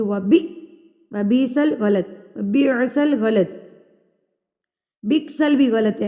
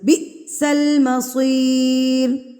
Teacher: حمزہ سے پہلے والے حرف کو جھٹکا دے کے پڑھا جائے گا، یعنی کہ با ہے تو با کو ہم جھٹکا دے کے پڑھیں گے وبیسل غلط، وبیعسل غلط، بکسل بھی غلط ہے، اینڈ پہ خواہ کی آواز بھی نکالے ہوتے ہیں، بکسل بھی پڑھے ہوتے ہیں، غلط ہے، بی جھٹکا دینا ہے آپ نے اس کو، بئسل مصیر۔